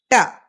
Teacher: Its sound is ta. It is a retroflex sound.